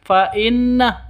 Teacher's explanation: nun tasdid berdiri sendiri. Berarti gunah musyaddadah dengung dua ketukan.